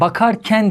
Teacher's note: dediğimde buradaki Ken zarf fiil ekinin tek bir form atı vardır a kalın A kalın ama Ken ekine geldiğimde e incedir